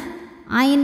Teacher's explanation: maka cara bacanya nya Ain ini panjangkan dua harakat saja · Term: Mad Thobi'i zohiri